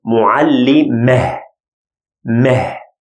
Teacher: It gives this ha sound. It is supposed to give ta sound, but here it's a consonant, so it will get ha sound. So معلم becomes معلمة.